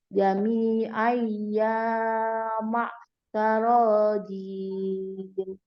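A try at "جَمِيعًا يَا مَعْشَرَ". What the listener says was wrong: Belum. Jami'ai yang dengung. Ai ya lebih panjang dengungnya. Dengungnya 3 harokat. Iyanya 2 harokat. Jadi dengungnya lebih panjang.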